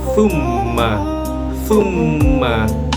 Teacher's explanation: Agak ditekan gitu agak diulang huruf hijaiahnya di mim tersebut. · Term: mim yang bertasydid